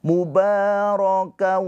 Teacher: Baik itu tanwin an, in, un, ya sama aja atau nun sukun. Dileburkan ke huruf wau, ditahan dua harakat. Nah, keluar dari hidung suaranya.